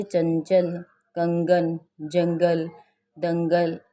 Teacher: अनुस्वार, इनका उच्चारण नाक से होता है